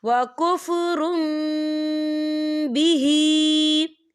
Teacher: यहाँ देखिए वकुफ्रुम, रा के ऊपर तनवीन है और तनवीन के बाद बा आ रहा है, तो यहाँ पर इकलाब होगा यानी तब्दीली होगी। हम तनवीन को जो है मीम के साथ मिलाकर पढ़ेंगे और यहाँ पर गुन्ना भी होगा